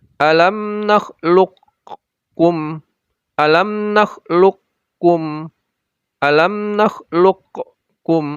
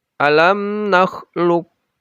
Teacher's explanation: Kita tidak diperbolehkan menggunakan huruf qof, termasuk sedikit seperti alam nakluqkum, alam nakluqkum, alam nakluqkum, apalagi seperti itu, langsung kaf, alam naklukum Um. Seolah-olah ada dua huruf kaf di sana, tidak ada huruf qof sama sekali.